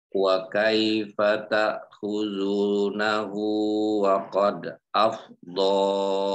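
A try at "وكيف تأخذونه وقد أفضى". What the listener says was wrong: Nah, begitu. Baik, terus.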